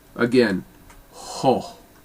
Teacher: it's just a really round, full O that you're breathing through